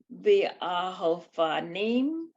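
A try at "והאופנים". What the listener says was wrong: V'ha-ofanim, yes, but yeah, there's a hey with the a as the second syllable. V'ha-ofanim.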